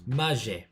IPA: maˈʒe